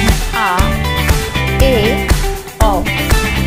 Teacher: मुख सबसे ज्यादा खुलता है अर्थात जो विवृत स्वर होते हैं इनके उच्चारण में हमारा जो मुख है वह सबसे ज्यादा खुला हुआ होता है